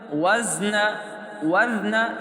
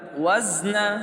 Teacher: یا ساکن اس سے پہلے زیر ہونے کی وجہ سے اس کو ہم ایک الف کے برابر کھینچ کر پڑھیں گے. زا کو اپنے مخرج سے ادا کریں گے. زا کی آواز کو ذال میں نہیں بدلنا. وزن وزن یہ غلط ہے.